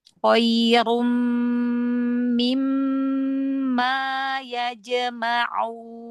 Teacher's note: Jangan nyeret mim ke ain ya.